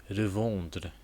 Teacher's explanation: So en is pronounced as on it's like a nasal sound.